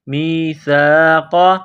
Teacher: قاف زبر قا، قاف کو موٹا کرنا ہے، میثاق۔ وَإِذْ أَخَذْنَا مِيثَاقَ بَنِي إِسْرَائِيلَ، یہ مد ہے، اس کو تھوڑا کھینچنا ہے۔